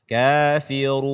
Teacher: nun ini dia sama dengan mim, setengahnya keluar dari mulut, setengahnya keluar dari hidung. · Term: nun sukun